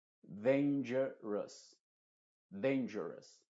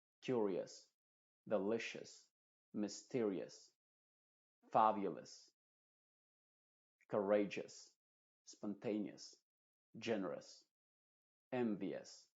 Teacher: No se dice dangerous o dangerous porque la O es muda y la U está pronunciándose como una schwa